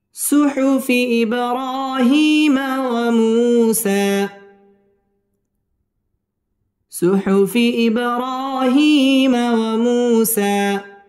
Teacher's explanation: সুহুফি ইব বা কলকলার হরফ ধাক্কা দিয়ে পড়তে হবে। ইব র খারা জবর র মধ্যে তবাই একালিফ টেনে পড়তে হবে এবং রটা পুর হবে।